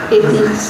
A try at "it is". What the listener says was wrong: Ini nggak usah ditekan, biasa aja is-nya. It is. Gitu.